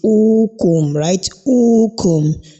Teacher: And whenever al-hamza precedes a letter of elongation, the type of elongation that we can say we can identify there is what is known as al-mad al-badal, al-mad al-badal, and it has the duration of only 2 haraka, that is 1 second